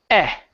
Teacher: Okay, so here you're saying A. Okay, it's not an A sound, it's eh. Your mouth will stay open. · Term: short E sound